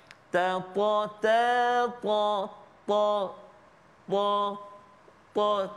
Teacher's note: huruf ta dia ada sifat isti'la kan, dia dan huruf tebal. Jadi bila kita sebut huruf ta tu terangkat lidah kita kan. Ta ta ta ta ta ta, terangkat daun lidah kita kan.